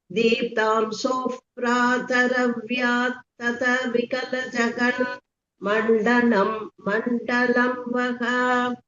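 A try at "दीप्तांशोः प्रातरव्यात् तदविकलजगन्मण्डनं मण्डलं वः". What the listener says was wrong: Very good.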